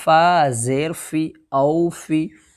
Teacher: واو لین کو نرم آواز کے ساتھ جلدی ادا کریں گے، جیسے حمزہ واو زبر او، فا زیر فی، فا کے نیچے زیر کی حرکت ہے، زیر کی حرکت کو جلدی پڑھیں، تھوڑا بھی نہ کھینچیں، معروف پڑھیں اور مجہول آواز سے بچیں، جیسے فا زیر فی، او فی۔